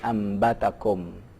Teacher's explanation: Begitu juga nun mati atau tanwin berhukum iqlab, artinya nun mati atau tanwin saat ketemu ba, maka nunnya melebur ke huruf ba.